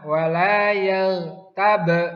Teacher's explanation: Bacaan qalqalah yang timbul pada huruf ba yang disukun. Karena huruf ba merupakan salah satu huruf qalqalah.